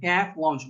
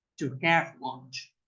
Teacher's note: Ustedes abren la boca en A y en lugar de decir A dicen E. Entonces yo no digo A, sino que digo E.